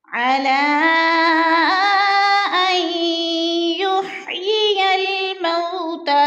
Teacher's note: مد منفصل 4 الفی مد ہے، 4 الف کے برابر ہم نے اس کو کھینچ کر پڑھنا ہے